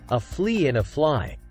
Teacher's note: to help you get the frickative F sound strong remember that f is voiceless pronounced without the voice by a strong push of air through pursed lips